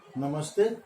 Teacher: नमः प्लस ते, नमस्ते, विसर्ग का दंत स हो गया क्योंकि आगे त